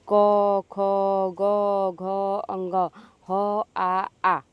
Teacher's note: इन सभी की आवाज आपकी कंठ से निकलेगी। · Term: कंठ व्यंजन